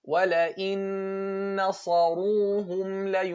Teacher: don't let the heaviness of the صاد affect the lightness of the noon